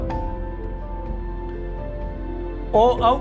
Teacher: ओ और औ का वर्ण का जो उच्चारण स्थान है वो कंठोष्ठ होता है, क्योंकि इसके उच्चारण के समय ध्वनि सीधे कंठ से आती है और होठों की सहायता से इनका उच्चारण होता है, तो इसलिए इनको कंठोष्ठ बोला गया है।